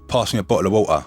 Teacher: with a cogne accent there's often a missing T